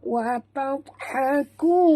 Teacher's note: huruf dad tebal tapi tak lantun. Jangan pula baca wa tadha. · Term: huruf istitalah